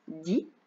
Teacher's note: ma langue se met derrière les dents quand je dis di